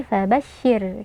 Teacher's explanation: kita baca tipis karena ro sukun sebelumnya berharakat kasrah jadi kita tidak mengangkat pangkal lidah